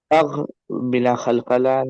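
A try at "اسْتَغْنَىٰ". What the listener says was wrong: تغ بولے تو قلقلہ ہو گیا ہونا آلریڈی. تغ نہیں بولیں گے اس تغ. بنا قلقلہ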